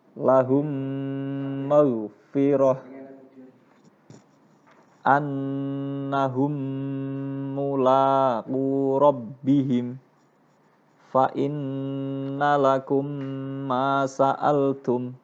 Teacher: Mim sukun bertemu mim sama dengan mim tasdid, harus dibaca dengung, dinamakan bacaan idgham syafawi atau idgham misli.